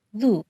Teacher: l as in lu, Which is an L that's pronounced using only the front of the tongue